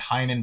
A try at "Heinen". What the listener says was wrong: Heinen. You said it wrong. gotta really emphasize the N.